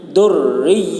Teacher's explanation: رائے مشددہ کے نیچے زیر ہے اس لیے را کو باریک پڑھیں گے